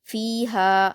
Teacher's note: हा पर अलिफ मद्दा है। दो हरकात खींचेंगे।